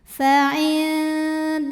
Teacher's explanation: mau ke Pangkal gigi Sari atas tapi belum nyentuh [Musik] yaainallah lam jalalah dibunyikan secara tafkhim sebab huruf sebelumnya berbaris fathah maka dibacanya tebal